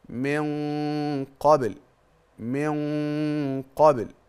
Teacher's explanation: الحكم الاول الاخفاء الحقيقي لان النون وقع بعدها حرف القاف دي اول حاجه الحاجه الثانيه ان الغنه بيكون فخمه لاني بعدها